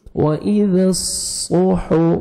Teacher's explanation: ذال کو نرمی سے ادا کریں گے اور صاد کو موٹا کر کے پڑھیں گے۔